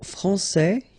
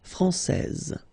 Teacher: you get this final S that you don't pronounce, so français, and then when you put this final E here, you will get française